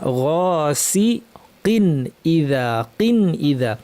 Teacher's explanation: কিন তানউইনের পর হামজা এসেছে, তানউইনটা স্পষ্ট করে বলবো, গুন্নাকে বাড়াবো না